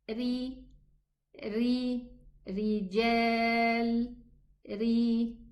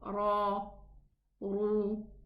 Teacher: when it's musta'liya, we can recognize the middle part of the tongue goes down, the furthermost part of the tongue rises up, and the throat is narrowed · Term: musta'liya, elevated